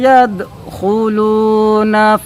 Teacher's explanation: وَرَأَيْتَ النَّاسَ يَدْخُلُونَ، دال پر جزم ہے، اور حروف قلقلہ میں سے دال ہے، حروف قلقلہ 5 ہے، قاف طا با جیم دال، تو دال ہے تو اس وجہ سے یہاں پر حروف قلقلہ ہے، قلقلہ ہوگا، یعنی پلٹ کر آواز آئے گی لیکن جماؤ نہیں ہوگا